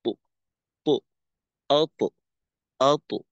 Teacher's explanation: পরবর্তী আওয়াজটা আতো গোল হয়ে ওকারমুখী হয়ে না যায়, জবরমুখী থাকবে। আতো অর্থাৎ জবরমুখী, যে তয়ের উচ্চারণ কি, ত, ত, এরকম।